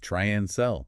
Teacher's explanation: That reduction of and to n happens all the time when we're linking verbs or items in a list makes it much smoother. · Yeah, people, the vowel sound in that unstressed second syllable gets reduced, and then and in try and sell just becomes N.